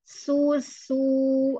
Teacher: Ketika bunyi u-nya, rongga mulutnya terbuka dan bibirnya mencucu ke depan.